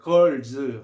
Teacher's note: 이때 s는 z로 발음한다. z.